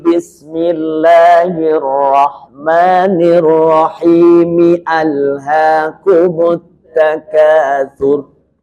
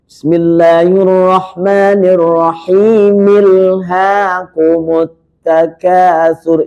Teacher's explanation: Ketika at-takatsur hamzahnya tetap muncul walaupun disambung.